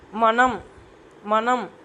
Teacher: தொடும் அது தொடும்போது உருவாகக்கூடியதுதான் டன்னகரம் நீங்க சொல்லி பாருங்க மனம் மனம் மனம் நாக்கு வந்து பல்லு பக்கத்துல தொட்டு பாருங்க ரெண்டு சுழி நா வரும் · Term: ரன்னகரம்